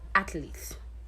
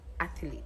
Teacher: So there's no vowel between the TH and the L. It's just athlete, not athlete.